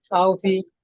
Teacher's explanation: ওয়াউলিনকে সর্বদা নরম আওয়াজে তাড়াতাড়ি পড়বো, একটুও টানবো না।